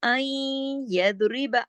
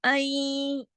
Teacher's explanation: आई यानी थोड़ी आवाज नाक में जा रही, थोड़ी सुनाई भी दे रही, आई। ठीक है, नून की आवाज थोड़ी है भी और थोड़ी नहीं भी ना। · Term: इदगाम नाकिस